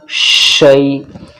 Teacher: زبان کا جو ہمارا بیچ ہے اس کو اوپر والے تالو سے لگاؤ تو شین نکل جائے گا